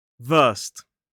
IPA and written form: vɜːst (versed)